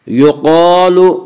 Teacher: قاف کو پر پڑھیں گے، قاف حروف مستعلیہ میں سے ہے۔ حروف مستعلیہ 7 ہیں جن کا مجموعہ خصہ ضغط نقض ہے، جو ہمیشہ ہر حال میں پر پڑے جاتے ہیں۔